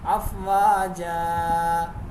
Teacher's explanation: یہاں پہ الف مدہ کریں گے اور 2 زبر والی تنوین آ جائے وقف کی صورت میں الف مدہ سے بدل جاتی ہے، تو یہاں 2 سیکنڈ کھینچیں گے